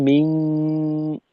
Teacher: এই গুন্নাটা তো আমরা নাক দিয়ে প্রকাশ করব, মুখ দিয়েও অংশ বের হয়। সাথে আমরা শিনের মাখরাজে অবস্থান করব এই গুন্না চলাকালীন সময়, গুন্নাটা পাতলা মিং।